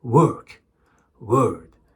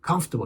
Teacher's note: Either we are skipping the R sound or we are pronouncing it softly. But many new learners are pronouncing it with a lot of pressure.